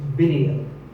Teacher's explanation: both the I and the E are pronounced as short I sounds.